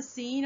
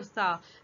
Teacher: سین میں سیٹی کی آواز ہے جبکہ سا میں سیٹی کی آواز نہیں ہے